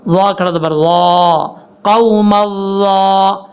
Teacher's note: یہ جو ضا ہے یہ ضا حروف مستعلیہ میں سے ہے، اس کو پر پڑھیں گے